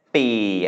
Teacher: that's mid-tone because it is a mid-class consonant with a long vowel and no final, a live syllable